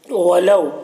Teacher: یہاں پر واو لین سے نرم آواز کے ساتھ جلد پڑھیں گے